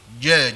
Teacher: Kalau orang Jawa dia sebut cha, dia ada angin. Kalau lahjah Arab ni dia tak ada angin. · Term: huruf jim